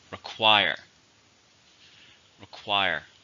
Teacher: How many syllables are in require? 2. Stresses on the second.